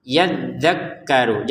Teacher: Ma-nya 2 harokat, yadzakkaru perhatikan. Dzal tasydid, kaf tasydid, dua-duanya harus ditekan. Yadzakkaru, jangan sekedar yadzakkaru.